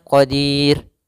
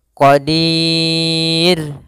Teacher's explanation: kita boleh memanjangkan dua harakat boleh pula empat harakat boleh pula En harakat maka boleh kita baca misalnya Qadir dua